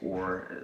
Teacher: Well, if you use a long O spelling, it still has the same sound. So or is long O plus a tongue curl